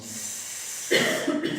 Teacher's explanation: cuando haces la letra S, no utilizamos acción de las cuerdas vocales. Es sorda la S.